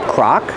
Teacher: use the open Sound a like hot and stop Croc the second vowel is uh like cup and up Croc